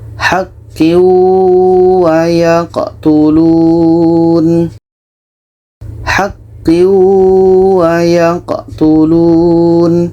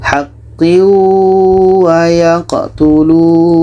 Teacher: Tanwin kita masukkan ke waw dan diiringi dengan dengung. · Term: idgham bi gunnah